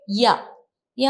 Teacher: യ എന്ന് പറയുന്ന സമയത്ത് നമ്മുടെ നാവ് എവിടെയും മുട്ടുന്നില്ല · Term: പ്രവാഹി ധ്വനികൾ